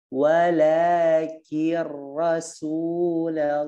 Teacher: Walakin rasul, ki tipiskan, kemudian ra-nya naik ke atas.